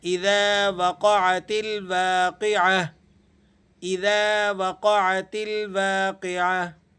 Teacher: یہ گول تا جب ہم یہاں وقف کرتے ہیں تو اسے ہا پڑھتے ہیں۔ اذا وقعت الواقعۃ، اب جب ہم اسے اسٹاپنگ ساؤنڈ کے ساتھ پڑھیں گے تو پھر ہم اسے ہا کی شکل میں پڑھیں گے۔